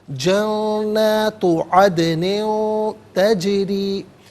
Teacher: रॉ के नीचे ज़ेर है, रॉ को बारीक करके पढ़ेंगे